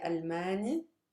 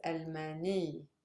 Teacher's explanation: correct like this with the stress on the last syllable however in colloquial arabic we for nationalities we don't stress the last syllable we stress the one before it